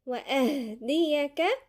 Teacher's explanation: الهاء تبقى باينة لأنها ضعيفة، حرف ضعيف وكمان ساكن، وهي من حروف الهمس